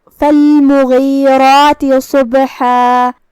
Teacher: کلمت صبح میں یہاں حرف الصاد ہے. صاد حروف التفخیم میں سے ہے، ہم اسے بھاری آواز میں منہ پھلا کے ادا کریں گے. یہاں بھی با کا حکم ہے قلقلہ، تو اس کا دھیان رہے.